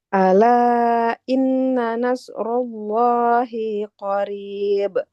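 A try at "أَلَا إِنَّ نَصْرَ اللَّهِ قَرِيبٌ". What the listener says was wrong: Hi-nya juga nggak boleh panjang.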